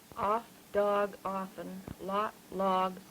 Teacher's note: The one that's down in the back, the low back rounded vowel. Typical of New England.